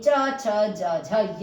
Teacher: आपका तालव्य है, यानी कि तालु से इसका उच्चारण किया जाता है